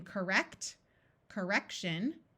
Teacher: the O schwas and sounds more like a short U, like in correct, correction.